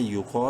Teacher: یا پیش یو، قاف الف زبر قا، قاف کو منہ بھر کے پڑھتے ہوئے ایک الف برابر لمبا کرنا ہے